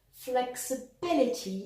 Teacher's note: flexibility stressed on the third syllable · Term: word stress